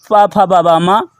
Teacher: ये ओष्ठ से उच्चारित होते हैं, इसलिए इन्हें ओष्ठ वर्ण कहते हैं